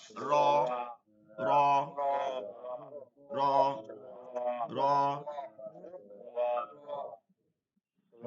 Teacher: র র র। জিহ্বার আগাটা ঘুরে যাবে, হ্যাঁ, এবং ঘুরে গিয়ে এই তালুতে, দাঁতের যে গোড়াটা আছে না, মাংস যেটা তালু, ওই তালুটায় গিয়ে লাগবে।